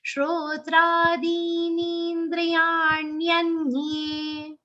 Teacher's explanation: So many long sounds in this charan. In fact, only two short sounds, dri and ya. Rest all sounds are long. So say this with full patience.